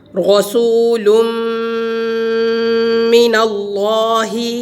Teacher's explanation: تنوین کے بعد میم حروف یرملون میں سے آ گیا تو ادغام غنہ کے ساتھ